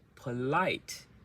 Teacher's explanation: So the light is louder and longer.